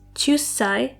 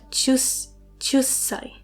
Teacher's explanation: It's chusai with a small tsu that creates a glottal stop sound. So it's not chusai, but chusai.